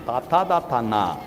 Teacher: നാവിന്റെ അറ്റം ദന്തത്തിൽ തൊട്ട് പറയുന്നത് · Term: ദന്ത്യം